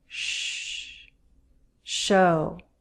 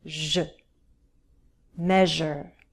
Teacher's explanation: I'm not creating a stop, just friction as I push out the air.